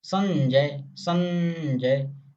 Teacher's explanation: संजय जा बोलोगे तो नाक प्रकंपित होती है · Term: अनुस्वार